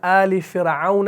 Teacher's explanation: تو فرعون کے لفظ کو بھی آپ نے را کو باریک پڑھنا ہے